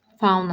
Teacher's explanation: Fauna sözü doğru yazılıb. Fauna şəklində də tələffüz olunur. Vurğu birinci hissəyə düşür.